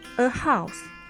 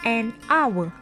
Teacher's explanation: The H at the beginning of hour is silent. Therefore, we choose to use an.